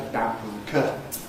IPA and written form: ˈbæmbuː ˈkɜːtn (bamboo curtain)